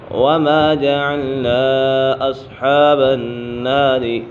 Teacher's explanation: وما جعلنا أصحاب النار إلا ملائكة وما جعلنا أصحاب النار، یہاں پر مد منفصل ہے، حروف مدہ کے بعد حمزہ دوسرے کلمے میں ہے تو اسی وجہ سے مد منفصل ہوگا۔ مد متصل اور مد منفصل کی مقدار 2.5 الف کے برابر کھینچ کر پڑھنا ہے